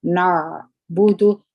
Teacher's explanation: عین د الجهر د توري څخه دي د جهر صفت پکښ کې دي هوا د خپل څخه نه راوځي